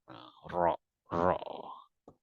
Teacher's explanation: Ro ini ada getar, ro, ro, karena bersentuhnya ujung lidah dengan gigi ro.